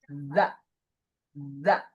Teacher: bedanya itu udaranya itu tidak terlalu sebesar sa. Ada sedikit banget, pasti ada ya karena keluar. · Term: huruf zal